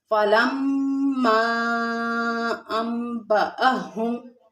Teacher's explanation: فلما میں میم مشدد ہے، یعنی اس کے اوپر تشدید ہے، اس کو سختی اور جماؤں کے ساتھ پڑھیں گے، اور مد منفصل بھی ہے۔